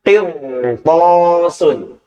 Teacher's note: contoh untuk huruf ro sukun sebelumnya kasrah, kemudian berikutnya ada huruf isti'la, maka ro-nya dibaca tebal.